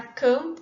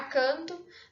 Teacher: nós temos a modificação do mã antes do pã, em relação ao nã antes do tã, ou antes do dã